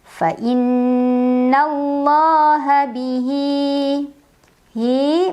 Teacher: Dan huruf setelahnya bukan hamzah, bukan a, bukan i, bukan u. Dibaca panjang, hak domirnya 2 harokat. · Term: mad silah qasirah